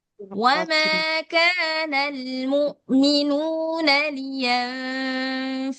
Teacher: Enam harakat. Jadi dia harus enam harakat lebih panjang daripada mad jaiz dan mad wajib muttasil. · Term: lazim musaqal kalimi